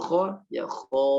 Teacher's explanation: Jadi beda suaranya, jadi tebal. Alifnya jadi tebal, menggaung.